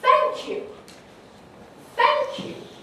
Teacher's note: a really good thank you with a nice high fall